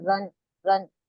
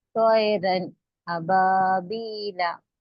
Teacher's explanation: اسی لیے یہ جو تنوین ہے، 2 زبر ہے، اس کے آخر میں جو نون کی آواز آ رہی، را 2 زبر، رن، رن، اس نون کی آواز کو ظاہر کر کے پڑھیں گے، یعنی کہ پورا اچھی طریقے سے نون کو پروناؤنس کر کے پڑھیں گے.